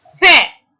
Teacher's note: the glide begins at the front half open unrounded position and moves in the direction of the central unrounded vowel position between half open and open